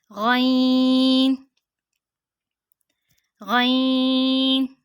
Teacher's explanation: حلق کے اوپر والے حصے سے ادا ہوتی ہے